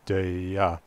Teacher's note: reproduce the standard Swedish emphasis on first syllable up tone on second